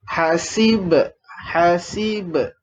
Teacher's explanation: Bila huruf ba ni mati, dia ada bunyi pantulan dia lah.